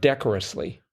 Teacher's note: the emphasis comes on that first syllable